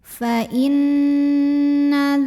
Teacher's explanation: Bunyi n-nya tahan sampai ada getaran halus ke hidung. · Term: gunnah musyaddadah